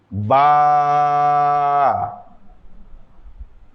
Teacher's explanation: বা, এক আলিফ টান, ঠোঁট থেকে উচ্চারণ হবে।